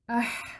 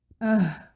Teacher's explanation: پہلے میں وسط حلق کے حا کو پروناؤنس کروں گی، پھر اقصی حلق کے ہا کو پروناؤنس کروں گی